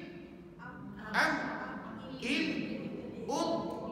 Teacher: Mim, Am, In, Um. Dia guna bibir dan guna juga pangkal hidung. Dia guna dua anggota.